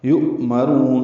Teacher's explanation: یؤمرون میں حمزہ ساکن جھٹکے سے ادا ہوگا ، یؤمرون، را پر پڑھیں گے، را کو لمبا کریں گے،